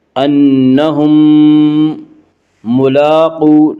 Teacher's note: لام کے اوپر کھڑا زبر ہے، کھڑا زبر کو 1 الف کے برابر کھینچ کر پڑھیں گے · اس کا قاعدہ ہے کہ میم ساکن کے بعد اگر دوسری میم آئے تو وہاں پہ ادغام شفوی ہوگا